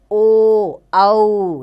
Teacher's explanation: कंठोदय, ओ, औ, यानी कंठ भी और होंठ भी दोनों का उच्चारण इसमें होता है, दोनों का प्रयोग इसमें किया जाता है उच्चारण में।